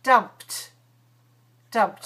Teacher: P. So if you pronounce p voiceless, then the ED will be t.